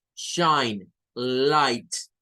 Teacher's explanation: es un sonido diferente de hecho es un sonido largo un sonido prolongado que se compone de un diptongo que es hay